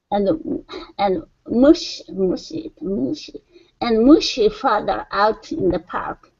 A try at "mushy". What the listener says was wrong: Yeah, so open your mouth just a little bit more on that vowel. Mushy.